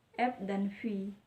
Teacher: dihasilkan dengan mempertemukan gigi atas sebagai titik artikulasi dan bibir bawah sebagai artikulator